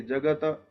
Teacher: जगत मतलब केवल त का उच्चारण आना चाहिए, अकार का उच्चारण उसमें नहीं है।